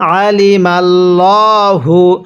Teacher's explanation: আইনটা চাপ দিয়ে পড়ব এবং মিমকে লামের সাথে লাগাবো